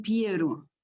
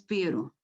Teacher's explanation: Aí não é com U, mas é com I. Antes da vogal tónica E